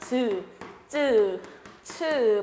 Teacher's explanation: 파열 플러스 마찰인 파찰음이 있습니다.